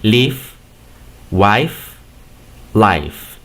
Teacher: Porque aquí me puedes decir, maestro, pero aquí termina en una E. No, la E no se pronuncia, termina en realidad con el sonido de la F